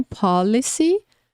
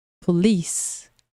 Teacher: a primeira palavra, ela tem a pronúncia mais forte no começo. A segunda palavra, a pronúncia mais forte no final